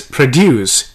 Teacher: the verb form is produce here the stress is on d u c e